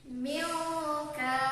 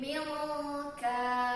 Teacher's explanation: Jadi huruf kaf atau qafnya itu ada di pangkal lidah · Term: ikhfa ab'ad